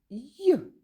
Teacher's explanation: звук й не можна довго протягнути і вимовляється він м'яко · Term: приголосний м'який